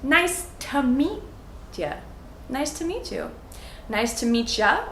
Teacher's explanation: we say these words all together, so it almost sounds like one big long word.